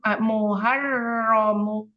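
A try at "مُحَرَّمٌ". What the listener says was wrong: Hak tipis. Muharramun.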